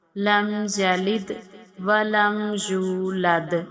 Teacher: دونوں دال پر ہم قلقلہ کریں گے۔